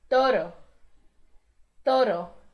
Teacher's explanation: Lembrando que tem um R só, então não vibra tanto como em perro, burro.